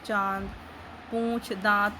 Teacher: यह स्वर मुख और नाक दोनों से बोले जाते हैं इसको चंद्रबिंदु द्वारा दर्शाया जाता है और 79 का प्रयोग करते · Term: अनुनासिक